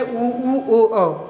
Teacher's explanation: वे स्वर जिनको बोलते समय ओठ है वृत्त की आकृति में खुलते हैं उसे वृत्ताकार स्वर कहते हैं